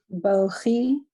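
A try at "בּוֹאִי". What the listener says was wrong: No. Silent letter here. Yes, Bo-E.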